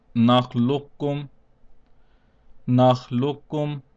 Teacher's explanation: we will also skip the first kaf and pronounce only the second kaf. This means that the lam with the zamma will be joined over with the second kaf.